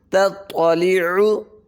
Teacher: عین کو حلق سے ادا کریں گے